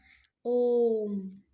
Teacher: इन स्वरों के उच्चारण में हर स्वरों से तीन गुना समय लगता है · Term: पलित स्वर